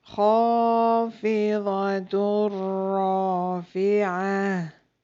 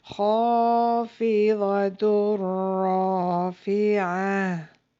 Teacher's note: Next example, we have Tanween followed by Ra, and the sounds of the Nun will be merged into Ra and will be read without Gunnah